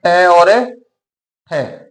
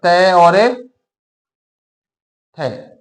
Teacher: तंत्रिकाओं में कंपन पैदा नहीं होता है अघोष व्यंजन कहा जाता है